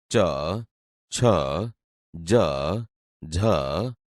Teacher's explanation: અહીંયા બોલતા તમે જોશો કે આપણી જીભ તાળવાને અડે છે, તેથી તે તાલવ્ય વ્યંજન છે.